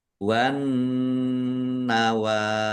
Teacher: An nawa alif lam samsiah karena tidak dibaca langsung masuk ke huruf berikutnya yaitu nun, ditandai nunnya ada tasdidnya. Nun tasdid dibaca gunnah atau mendengung, ditahan biar tampak mendengungnya.